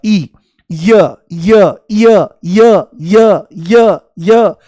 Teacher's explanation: जैसे ही य बोलोगे तो इ शुरू में महसूस होगा · जैसे ही य बोलोगे तो ई शुरू में महसूस होगा, ई, य य य य य य य, जैसे सीढ़ी अटक गई हो तो ई की ध्वनि आती है। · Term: इ की ध्वनि, अर्धस्वर